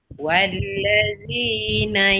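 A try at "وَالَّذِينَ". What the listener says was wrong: Walla. Jangan al. Walla.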